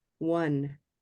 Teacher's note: We spell it O-N-E, but we have an invisible w just before it.